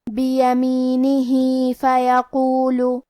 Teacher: حرف القاف کی ادائیگی زبان کے جڑ اور تالو کے نرم حصے سے ہے. قاف حروف تفخیم میں سے بھی ہے، تو ہم یہ حرف کو موٹی آواز میں پڑھیں گے.